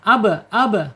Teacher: qalqalah ketika dia sukun ya. Ab ab mantul. Qalqalah itu mantul.